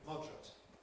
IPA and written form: ˈmɒdrət (moderate)